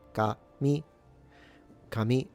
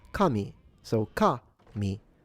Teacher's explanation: it goes from high to low.